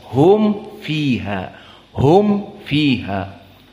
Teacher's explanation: namun mim lebih ringan maka mimnya harus jelas Hum fiha karena mim asakinah Idhar asyafawi di saat penyebutan mim bertemu dengan Fa jelas mimnya tidak Idam tidak ikhfa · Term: idhar asy-syafawi